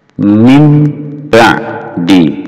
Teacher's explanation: Ini asalnya min ba di. Berhubung di sini nun sukun bertemu ba menjadi mim ba'di. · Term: iqrab